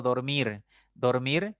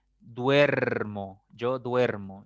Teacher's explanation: Se supone que la raíz era dorm, pero al conjugarlo te das cuenta que esa O cambió por un diptongo UE, entonces cambió su raíz.